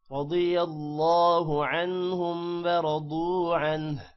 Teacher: را موٹا ہوگا، ضاد بھی موٹا ہوگا، اللہ کا نام بھی موٹا ہوگا، را موٹا ہوگا یہاں پر اور ضاد بھی موٹا ہوگا، اور عنہ آخر میں ہا کی آواز بھی نکالنی ہے.